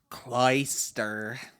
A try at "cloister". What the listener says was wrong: You again, like it's the one that one you hung on the last syllable. Ter. Cloister.